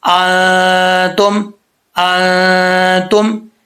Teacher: اطعمہ ان انتم، یہاں پر یہ دیکھنے والی چیز ہے کہ پہلے ہے ان، یہاں پر پہلے ان پہ غنہ نہیں کریں گے کیونکہ نون ساکن کے بعد حرف حلقی میں سے حرف آ رہا ہے تو اس کو ظاہر کر کے پڑھا جائے گا. ان انتم، آگے جو ان آ رہا ہے اس پہ غنہ کریں گے، یہ نون ساکن کے بعد حروف اخفا میں سے تا آ رہا ہے تو یہاں پہ کیا ہوگا، غنہ ہوگا ایک الف کی مقدار.